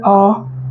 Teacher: पश्च का मतलब पीछा, पिछला, तो ये हमारा मध्य में आ गया आ, और ये दीर्घ अ जैसे बोलेंगे आ, ठीक है, तो वो हमारा पीछे चला जाता है। मतलब जो हमारा जीभ का पिछला हिस्सा है यहाँ से हम इसका उच्चारण कर रहे हैं